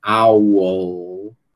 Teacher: Você vai na a transição entre o som U e o som L, você obrigatoriamente tem que passar pela região de articulação do schwa. Então, por isso que é impossível você não dizer um schwa na hora que você está pronunciando essa palavra aqui.